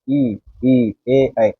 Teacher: इसको अगर हम बोलते हैं तो हमारी जीवा का जो अग्र भाग है वो काम कर रहा है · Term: अग्र स्वर